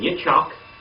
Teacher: that's a guttural. That's like that throat, like to clear your throat, because that's a CH sound